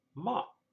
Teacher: the sound ma, M-A, said in high-level tone